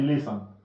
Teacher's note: Le T ne se prononce pas. On dit listen.